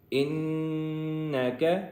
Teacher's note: نون کے اوپر تشدید ہے جس کی وجہ سے ہم غنہ کریں گے